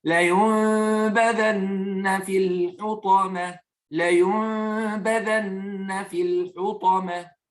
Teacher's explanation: on va faire la transversion. C'est-à-dire de transformer le nun en mime. Et je vous rappelle que vous allez tout le temps voir un petit mime dessiné en dessus de ce nun-là pour te rappeler de transformer ce nun-là en mime.